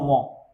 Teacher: এগুলো হচ্ছে নাসিক্য বর্ণ। এগুলো উচ্চারণ করার সময় কি হবে? মুখ বন্ধ থাকবে এবং নাক দিয়ে বাতাস বের হবে।